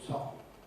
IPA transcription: ˈsɒfn̩